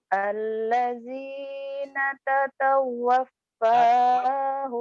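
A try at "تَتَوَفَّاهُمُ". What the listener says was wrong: Tatawaf. Tatawaf. Nyamber. Kurang nyamber.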